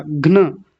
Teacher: घ जो है आधा है तो जल्दी बोला जाएगा घ्न। सबसे पहले इतने को ही देखिए घ्न, क्योंकि न पूरा है।